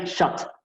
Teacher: Estas dos letras juntas serían como una U, y esta sería shot, ¿no? Como una O bastante abierta, ¿no? Medio similar a una A, no es ni una O ni una A, es un sonido puntual ¿no? del inglés.